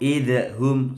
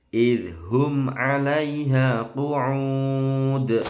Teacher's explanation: dalnya tidak boleh mantul, cukup di ujung gigi